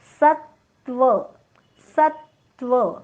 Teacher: सरहस्व आहे, पुढे आलेला आहे जोडाक्षर, म्हणून जोडाक्षराचा पहिला अर्धा भाग आघात म्हणून घेतलेला आहे. स वर आघात, डोक्यावर हलंत त.